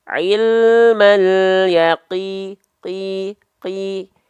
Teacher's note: ketika qaf berharokat kasroh, dia tetap dibaca tebal, tapi ketebalannya menipis.